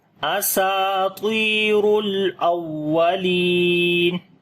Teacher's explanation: پیش ہے اور لام کے اوپر صفت توسط آئے گی اور واو کو تھوڑا سخت کر کے پڑھیں گے اور آواز کو اوپر اٹھائیں گے، نبر کریں گے ، لی کو یہاں پر لمبا کریں گے، یا مدہ ہے